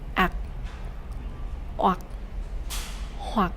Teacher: For the dot tone, you have to lower and deepen your voice.